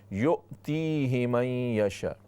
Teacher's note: हमज़ा को झटके के साथ क्लियर करके पढ़ना है, तहक़ीक़ के साथ।